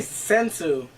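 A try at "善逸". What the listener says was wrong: Sensu B. But it's a Z. Well, it's a Z, not an S. And you don't pronounce S's and Z's the same way, like in the US.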